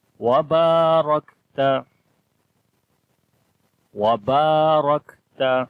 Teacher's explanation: با کو لمبا کریں گے، الف مدہ ہے، الف سے پہلے زبر آ گئی. را کو موٹا پڑھیں گے، را کے اوپر زبر ہے. کاف کے اندر صفت حمز اور شدت کلیئر آئے گی.